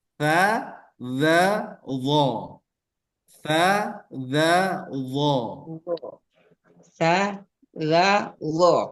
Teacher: ujung lidah bertemu ujung gigi seri atas